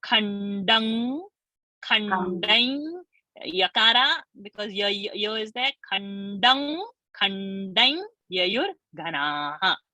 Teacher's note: So instead of doing anuswara khandam, do khandang.